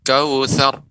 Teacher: Pengucapan ra tapi ra-nya tebal.